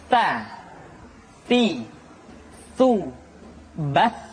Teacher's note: ujung lidah disentuhkan dengan dinding dua gigi seri bagian atas